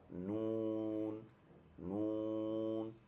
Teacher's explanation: 9 নম্বর মাখরাজ জিহ্বার আগা তার বরাবর উপর তালুর সঙ্গে লাগালে সেটা হবে নুন, নুন